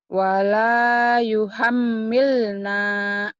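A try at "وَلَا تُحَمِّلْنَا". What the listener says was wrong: bukan yu tapi tu. Wala tuhammilna.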